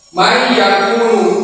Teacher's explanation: Yang tadinya man yakulu, yang nun ini seolah-olah ditiadakan ditarik ke huruf ya menjadi man yakulu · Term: idgham